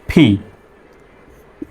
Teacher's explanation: পি এর উচ্চারণটা ফি এভাবে বলে দুই ঠোঁট একখানে করে উচ্চারিত হয়